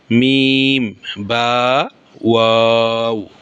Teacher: তাহলে ওয়াও, বা, মিম, এই 3টি হরফ দুই ঠোঁট হইতে উচ্চারিত হয়।